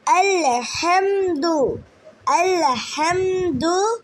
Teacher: কঠিন হ্যাঁ কণ্ঠনালীর মধ্যখান থেকে উচ্চারিত হবে।